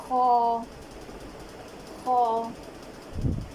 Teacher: خ کو اس کے مخرج سے ادا کرتے ہوئے خ کا مخرج ہے حلق کا سب سے اوپر والا حصہ. خ کو اس کے مخرج سے ادا کرتے ہوئے زبان کے آخری حصے کو اوپر کی جانب اٹھائیں گے تو خ صحیح اور موٹا ادا ہوگا